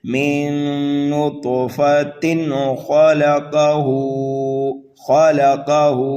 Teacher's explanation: من نطفۃ خلقہ، خلقہ، خا اور قاف کو جو ہے ہم پر کر کے پڑھیں گے، ہا کو ایک الف کے برابر کھینچ کر کے پڑھنا ہے